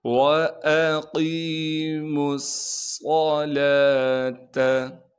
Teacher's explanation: تو ہم نے میم کو ڈائریکٹ صاد سے ملانا ہے، صاد میں سیٹی بھی ادا کریں گے اور صاد کو موٹا بھی پڑھیں گے۔ صاد پر تشدید ہونے کی وجہ سے تھوڑا سا ٹھہراؤ بھی رکھیں گے۔ · صاد پر تشدید ہونے کی وجہ سے تھوڑا سا ٹھہراؤ بھی رکھیں گے۔ لام پر کڑا زبر ہونے کی وجہ سے لام کو ایک الف کے مقدار کھینچیں گے۔ لام کے بعد واو موجود ہے لیکن ہم اس واو کو نہیں پڑھیں گے۔